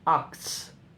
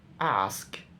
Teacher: the consonant s and k switch position